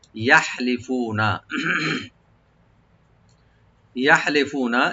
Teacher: ইয়াটাকে open করে হাটাকে একটু আমরা হামস করবো। ইয়াহলিফুনা, ফু এক আলিফ টানবেন, নুনে কোনো টান নাই।